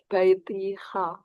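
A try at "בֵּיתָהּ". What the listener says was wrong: Jadi dia tidak ada i-nya.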